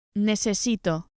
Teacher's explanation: As we saw before, speakers of Latin American Spanish will simply use an S.